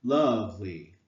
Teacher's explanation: Love is obviously the emphasized syllable.